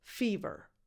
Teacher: So the first vowel is a tense E, as in the verb eat. Fever. And the last vowel is a schwa. So the two vowels look the same in the spelling, but they are different.